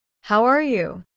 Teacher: Did you notice that the words almost connect? It sounds like haraya. That is the natural rhythm.